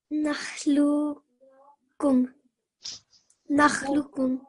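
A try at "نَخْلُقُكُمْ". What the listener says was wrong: Yeah, just when you join this lam with this red calf, lukkum. I need to hear that joining, that stressing sound. So nakhluqukum. Nakhluqukum.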